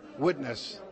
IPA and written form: w'ɪtnəs (Witness)